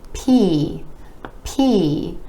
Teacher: the P is another of those air puff sounds, meaning it's made with a tiny puff of air being released